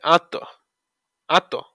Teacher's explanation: জবর লাজি আল্লাজি হামজা জবর আ লাগবে তর সাথে আত আত ত সাকিনে কলকলা প্রতি ধ্বনি সৃষ্টি করে